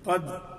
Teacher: دال ساکن ہے، اس سے پہلے قاف ہے، قاف کے اعتبار سے ہم نے اس کو پر کر کے پڑھ دیا